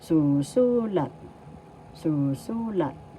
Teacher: First syllable su, second syllable su, third syllable lat. The accent is in the second syllable su. So you pronounce this or bigkas, susulat.